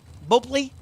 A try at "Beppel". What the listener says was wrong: Beppel. The O is silent. Beppel.